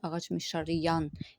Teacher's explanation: Vurğu ikinci komponentin son hecasına düşür.